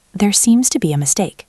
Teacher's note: If I say there seems to be a mistake with a flat falling voice, it sounds sarcastic. >> It sounds like a robot who is angry.